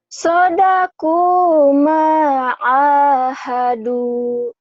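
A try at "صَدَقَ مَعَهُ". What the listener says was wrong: Bagus, terus.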